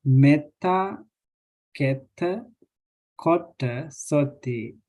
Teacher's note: These vowels become short because there are two consonants before the vowels